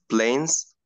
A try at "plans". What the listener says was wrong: planes تعني طائرات وأكيد في حرف الإي. so this is planes. this is plane طائرة. planes طائرات بس هاي مش planes. please you have to differentiate between planes and plans.